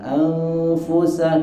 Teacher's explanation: nun mati ketemu fa, dibacanya bukan ang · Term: dengung